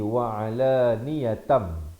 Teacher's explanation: tanwin bertemu mim idgham bi gunnah. Asalnya wa alaniyatan, jadi wa alaniyatam. Tapi jangan lupa dengungkan 2 harakat